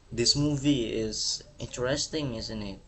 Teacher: dia nadanya turun atau bisa disebut eh falling intonation. Falling falling intonation.